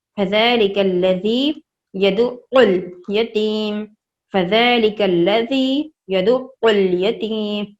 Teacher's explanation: عین کی آواز حلق سے آنی چاہیے